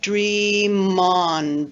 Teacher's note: the m at the end of dream straddles the two syllables and we have dream on [Music] so it sounds like one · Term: VC plus V linking